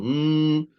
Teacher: kalau kita pegang batang hidung kita ni kita akan rasa batang hidung ni kata ada vibration · bunyi dia macam mana bunyi dia macam dengunglah bunyi dengung H mulut tutup tapi hidung ada ada laluan bunyi sesuatu keluar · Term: gunah